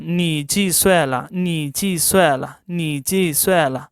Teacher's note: Third tone rule applies here. We can change this 你 into second tone.